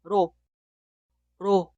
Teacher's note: 리을 como consonante inicial podemos pronunciar en dos maneras. Podemos pronunciar como R en español, pero R que se ubica entre las vocales.